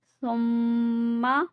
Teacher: میم مشدد پہ بھی غنہ ہوگا